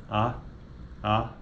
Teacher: veja que a língua está posicionada verticalmente para baixo